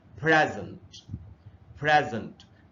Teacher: ये जो पहला सिलेबल है PRE का, इसी के ऊपर ये रहा प्राइमरी स्ट्रेस, यानी कि अच्छा ये जो ई है इससे ए का साउंड बनता है आईपीए में, तो इसको हम पढ़ेंगे फ्रै, और ये जो दूसरा हिस्सा है ये है जंट।